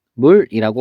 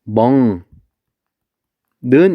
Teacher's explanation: 식물은 발음이 어떻게 되냐면 식물이라고 발음이 돼요. 그래서 결국에는 이 기역이 이응으로 바뀐 거예요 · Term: 비음화